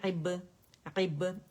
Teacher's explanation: با کے گیلے حصے آپ ملائیں گے عیب اور پھر وہ جدا ہوں گے قلقلے کے لیے آواز باؤنس بیک ہوگی